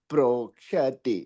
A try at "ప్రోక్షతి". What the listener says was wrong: ప్రోక్షతి అంటున్నారండి క్ష పైకి లేదండి